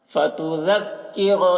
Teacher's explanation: ذال کو باریکی کے ساتھ پڑھیں گے، را کو پر پڑھیں گے، را کے اوپر زبر ہے